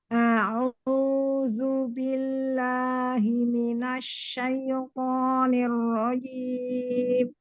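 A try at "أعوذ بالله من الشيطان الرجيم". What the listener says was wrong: Yuk perhatikan lagi ta'awudznya. Perhatikan lagi ta'awudznya, hurufnya zal ya, bukan zai. A'udzu, zu. Ujung lidahnya keluarkan sedikit.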